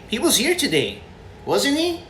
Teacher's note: wasn't he with rising intonation